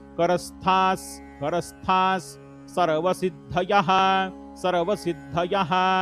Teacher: स्थाच्या समोर विसर्ग, विसर्गाच्या समोर स हे अक्षर, त्यामुळे विसर्गाचा उच्चार स मध्ये